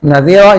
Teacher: Nadzira ini disebut mad iwad. Iwad itu artinya ganti-ganti tanwin ke fathah biasa ee dan dibaca dua harakat